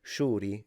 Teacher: In Palermo, it's more like a SH, but softer. So it's similar to the X in Mandarin, a little bit, maybe.